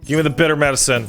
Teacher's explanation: she's got a lot of glottal fry